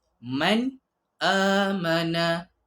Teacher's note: Izhar jelas. Bunyi nun jelas dan nyata. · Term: izhar halqi